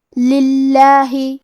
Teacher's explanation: کلمت للہ کی شروعات میں لام کے نیچے زیر ہے، لہذا ہمیں لفظ الجلالہ مطلب کلمت اللہ کے لام کو پتلی آواز میں پڑھنا ہے